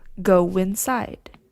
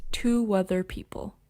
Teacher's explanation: the w sound happens even if there isn't a w letter in the spelling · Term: vowel-vowel linking